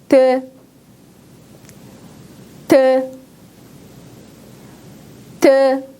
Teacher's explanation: 자음 드는 여러분 울퉁불퉁한 잇몸과 혀의 앞쪽이 만났다가 떨어지면서 바람을 밖으로 내보내는 소리입니다.